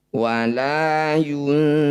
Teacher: Maqabi bertemu huruf hidup, kemudian dibaca berhenti, disebut bacaan mad arif disukun. Cara bacanya fu panjangkan 6 harokat, huruf terakhir sukunkan.